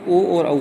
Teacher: ओ और औ में होठ का भी इस्तेमाल होता है, कंठ का भी इस्तेमाल होता है, इसलिए इसको कंठोष्ठी कहते हैं।